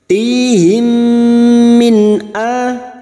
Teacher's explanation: Tihim kasrah diikuti sukun 2 harakat mat tabi'i. Him mim sukun bertemu mim idgham mimi, memasukkan bunyi mim sukun kepada mim berikutnya disertai mendengung selama 3 harokat